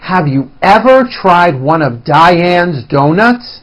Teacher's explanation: notice how I slowly step up and then I work my way down again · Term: intonation